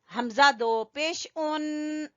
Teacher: नून की आवाज आएगी एंड पे